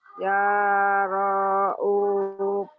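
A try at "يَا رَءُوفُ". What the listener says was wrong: Ya ra'ufu. O-nya yang panjang.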